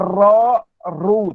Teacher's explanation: apabila Ra berbaris di atas dan berbaris di hadap atau berbaris di hadapan, maka Ra dibaca dengan Ra, Ru, tebal. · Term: Ra mufakhamah